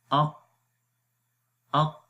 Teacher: हमज़ा क़ाफ ज़बर अक़, तो सांस रुक गया। शिद्दत यानी कि इस सिफ़त के अंदर आवाज़ अपने मखरज में बंद हो जाती है, सख्ती आ जाती है। जब आवाज़ बंद होगी तो आवाज़ में सख्ती आएगी, कुव्वत आएगी, तो आवाज़ आती है अक़ अक़।